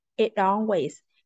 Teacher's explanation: instead of making the T into a glottal T, it would have become a flap T.